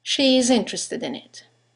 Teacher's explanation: there's a semivowel y that links the vowel at the end of she to the vowel at the beginning of is